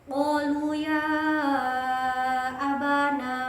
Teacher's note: ya-nya itu dibaca panjang bertemu dengan alif. Itu dinamakan mad jaiz munfasil. Itu karena dibaca panjang dan bertemu alif di lain kalimat.